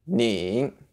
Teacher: also you have to add a third tone so knee down and up